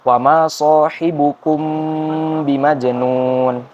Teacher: Sama seperti sebelumnya, jadi wama sahibukum, kum itu kaf domah bertemu dengan mim sukun, lalu setelah mim sukun kita bertemu dengan huruf ba bimajnun. Jadi ketika membaca mim sukunnya kita tahan dan didengungkan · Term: ikhfa syafawi